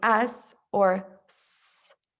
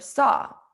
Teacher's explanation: this is alveolar which means that the tongue and the alveolar ridge are places of constriction